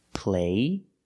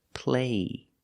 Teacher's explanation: there's no stop T so the vowel is longer